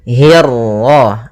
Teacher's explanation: kasrah bertemu ra yang tebal. Nah, di sini kita namakan dengan ra tafkhim